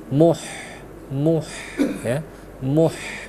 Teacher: Ha itu ketika dia sukun jadi tenggorokan itu terbuka dia muh muh ya muh nih pakai tenggorokan muh si ya itu baru tepat ha-nya ha hi hu muh si. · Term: huruf ha ketika sukun